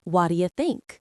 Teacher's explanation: The stress is on the word think. That is the important word.